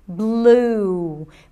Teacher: it's a light l that shifts into a tense ooh sound · It's a light L that shifts into a tense oo sound. Blue. Make sure that the oo sound is not in the front of the mouth, blue, because then it tends to reduce the word and it may sound unclear.